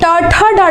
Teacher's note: जब आप टाठा डाढ़ा बोलते हो तो तालु से थोड़ा ऊपर में आपकी जीभ जाती है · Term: मूर्धा